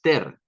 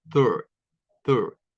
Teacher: lo está haciendo con un sonido de E puro y no es una E pura. Es un schwa. Es mucho más suave. Es third, third.